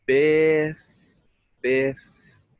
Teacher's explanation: your teeth want to come onto the bottom lip when we get to the F sound · So we want to close our lips after the first vowel and the first syllable